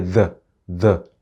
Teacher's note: To tunda ya ɗan fi kauri kuma dama mai vibration ne, in ka sa yatsanka a makogwaro ka ce the za ka ji vibration